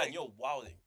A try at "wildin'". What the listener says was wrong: no, no. He said the G. He said the G.